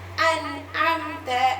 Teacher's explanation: தெளிவாக நூனை வெளிப்படுத்தி ஓதுறதுதான் எப்படி அன் அம்த என்ன சொல்லணும் அன் அம்த அந்த நூன் மட்டும் சிம்பிளா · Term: இல்ஹார்